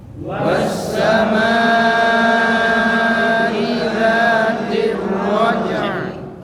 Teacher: Jangan baca raja'i, ya, jangan baca i. Disukunkan.